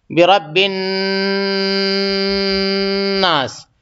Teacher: نون پہ غنہ کریں گے کہ آواز کو ناک میں تھوڑی دیر روکیں گے نون پہ